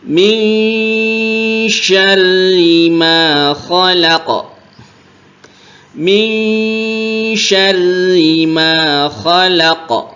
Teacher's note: ketemu Q ini dipantulkan atau hukumnya Qalqalah